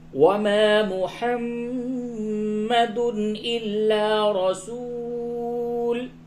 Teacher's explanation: میم مشدد ہے، اس جگہ پہ غنہ ہوگا، تنوین کے بعد حمزہ ہے، یہاں پہ اظہار ہوگا، وما محمد إلا رسول قد خلت من قبله الرسل.